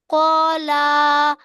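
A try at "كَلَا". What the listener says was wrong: ক কেন টান দিচ্ছ? ক টান হবে না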